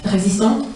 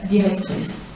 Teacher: l'écart très faible entre 2 réalisations voisines du même timbre vocalique, donc un E plus fermé, résistante, et un E plus ouvert, directrice